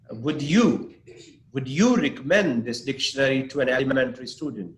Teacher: Yeah, you can, for example, now when you say, would you recommend this dictionary to an elementary student? Now my stress is on you.